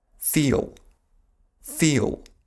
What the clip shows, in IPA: fiːɫ